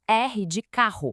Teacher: A gente não fala dois R separados, né? É um som só mais forte.